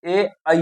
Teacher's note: कंठ और तालु से ए ऐ बोला जाता है